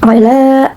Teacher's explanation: Hukum tajwidnya yaitu matobi'i, karena terdapat lam bertemu dengan alif yang dibuang dan dibaca panjang 2 harokat